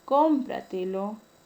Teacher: La palabra cómpratelo, la mayor fuerza de voz está ubicada en la tras antepenúltima sílaba. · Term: sobreesdrújula